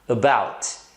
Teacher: Porque a sílaba tônica é o bout, é a segunda.